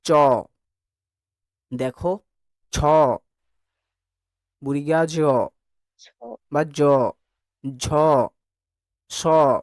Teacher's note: জিহার মধ্যভাগ তালু তথা শক্ত তালুকে স্পর্শ করে যে সকল ধ্বনি উচ্চারিত হয় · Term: তালেব্য ব্যঞ্জন